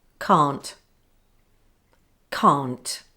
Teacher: the negative of can, can't, is never a weak sound